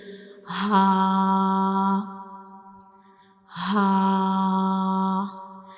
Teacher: ha is a throat letter and it is pronounced from the bottom of the throat